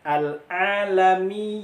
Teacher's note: Mimnya masuk ke hidung, ya-nya nggak boleh masuk ke hidung.